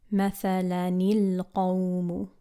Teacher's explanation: we solve that problem of two sukoons meeting by connecting the two words using a kasra vowel